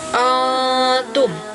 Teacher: Hukumnya adalah ikhfa, artinya samar. Dibacanya dengan dengung ditahan dulu 2 harokat